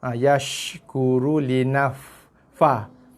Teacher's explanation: Okey, kemudian shin jaga yash. Okey, shin mati ada sifat bersemburan tu